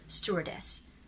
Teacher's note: the main stress is found in the first syllable